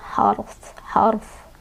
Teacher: Jadi fa-nya dibaca kecil aja, wal harf, fa sukun, ro-nya tebal